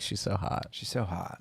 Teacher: she's a little vocal frying